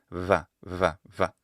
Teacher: sometimes it could be realized more like a bilabial fricative vv. One example could be the word for 20 in Spanish which is vente.